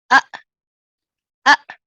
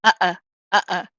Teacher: fundamentally what you're doing is you're closing your vocal chords and shutting off the sound flow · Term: Hamza